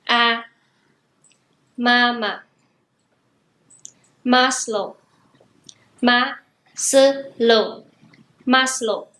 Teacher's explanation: Chúng ta đọc có dấu sắc ở bên trên là á hay là ú, mà chúng ta phát âm bằng cách kéo dài các nguyên âm ít nhất là gấp đôi các nguyên âm ngắn và giọng điệu hơi đi xuống một chút